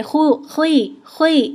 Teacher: اس میں ہونٹ نہیں گول ہوں گے لیکن موٹا کرنے کی کوشش کیجیے گا اس کو